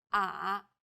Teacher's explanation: the third tone goes down from a low pitch then Rises to the middle of the pitch range